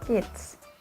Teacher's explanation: The K sound is called voiceless velar stop